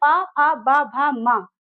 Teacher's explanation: ये प भ म तो ये हमारे ओष्ठ ओष्ठ से बोले जाने वाले व्यंजन है।